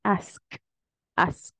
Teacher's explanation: Ese final se escucha como una pequeña explosión. Y en la garganta no siento nada, solo siento como una pequeña explosión.